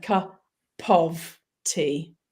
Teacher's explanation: And notice when I say cup of tea, I'm actually rolling the P and the of together, cup of tea. And that's going from the P to the O, the of, from a consonant to a vowel